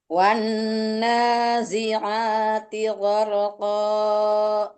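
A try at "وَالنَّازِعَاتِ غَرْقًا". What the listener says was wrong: Jangan terlalu panjang mat iwatnya. Koknya itu kan nanti mat iwat tuh namanya ya. Nanti jangan terlalu panjang ya. Wan nazi'ati gharqa. Segitu aja.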